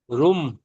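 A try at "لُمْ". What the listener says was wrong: লুম, লুম, রুম নয়, লুম।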